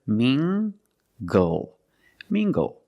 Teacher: using the nasal sound and the hard G together